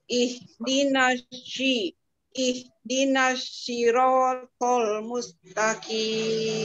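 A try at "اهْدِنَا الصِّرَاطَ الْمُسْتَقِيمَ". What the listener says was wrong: Nah, jadi shin. Jangan jadi shin. Si. Huruf sod. Huruf sod. So, si. Nah, sekarang ihdinasyi. Huruf lamnya ditipisin. Siratal. Jangan siratal. Jangan tol, tapi tol. Tol. Tol.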